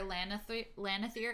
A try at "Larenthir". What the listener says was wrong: You're switching the N and the R. It's all good.